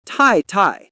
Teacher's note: Both syllables fall sharply.